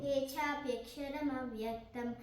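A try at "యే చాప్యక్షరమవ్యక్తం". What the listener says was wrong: నొక్కద్దు, ఏ చాప్యక్షర, ఏ చా అనొద్దు.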